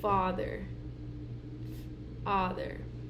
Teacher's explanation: the low vowel is going to be back, and it's going to be the in father.